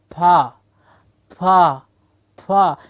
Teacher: What all I'm doing is obstructing the sound of ah with my lips to form a consonant sound.